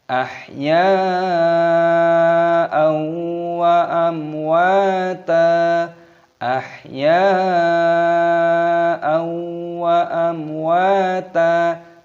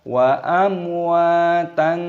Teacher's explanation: Wa ta wawunya dibaca panjang, ada tanda alifnya, panjangkan 2 ketukan mad tabi'i, dan taknya di sini berharokat fathah tanwin, ini dibaca panjang, jangan dibaca amwatan.